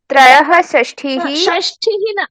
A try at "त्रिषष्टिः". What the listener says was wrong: षष्ठिः न ठकार नास्ति टकार ट